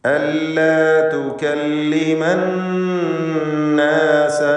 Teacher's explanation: അന്നാസ ഈ പദത്തിലെ നൂനിനെ മണിച്ചുകൊണ്ട് ഉച്ചരിക്കുക. നൂൻ മുഷദ്ദദ 2 ഹറക്കത്തിൻ്റെ അളവിൽ ഗുന്ന നൽകുക.